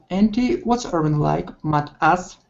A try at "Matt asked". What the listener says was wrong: One more time. Open it up just a little wider. Instead of ma down, ah wide. Ah, Matt asked. Okay, and you're going to feel it in your nose. Okay, you're going to feel it up here.